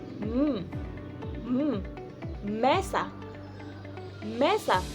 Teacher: ang itaas at ibabang labi ay nagtatagpo upang makabuo ng tunog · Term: bilabial